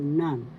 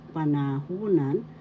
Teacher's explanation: syllable pa second syllable na third syllable u and fourth syllable The third syllable has the accent